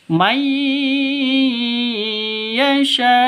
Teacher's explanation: Yu'tika man yasha. Mayyasha, nun mati bertemu dengan ya. Cara bacanya masuk ke ya disertai dengung 2 ketukan. Karena bacaan idgham bi gunnah.